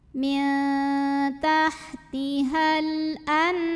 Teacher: Ada alif lam qamariyah. Karena alif lam menghadapi huruf qamariyah yaitu hamzah, maka lam sukun dibaca idhar, jelas.